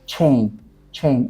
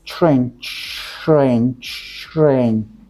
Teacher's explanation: It starts with ch and then rain, because we shouldn't forget r there.